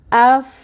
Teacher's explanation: فا ساکن ہے، اس کے ساتھ ملائیں گے اور فا کی صفت جو حمز کی ہے اس کو واضح کریں گے